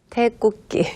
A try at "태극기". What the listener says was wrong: 네, 태극기. 네, 국기 아니고 극기.